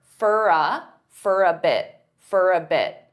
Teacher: they'll pronounce for as more of an unstressed fur